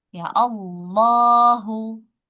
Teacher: Hamzah wasalnya dibaca fathah ya. Kalau lafaz Allah di awal kalimat, maka hamzah wasalnya dibaca fathah.